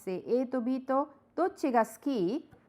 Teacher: You can just say A to B to dochi ga suki and the intonation is rising.